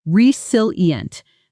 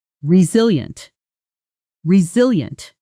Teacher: Notice the stress, resilient. The strongest beat falls on the second syllable.